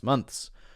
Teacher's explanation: So what you're doing there is sliding it back from the TH sound directly to the S sound.